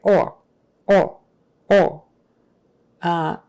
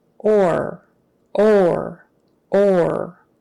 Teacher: we kind of hold out our R sounds a little longer than you might be used to you might be tempted to say something like or or or